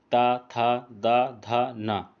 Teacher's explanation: हम लोग जब ता, था, बोलेंगे, दा बोलेंगे, धा बोलेंगे, ना बोलेंगे तो हम लोगों का जबान जो है दांत पे लड़ता है, इसीलिए इसको दंत व्यंजन कहा जाता है।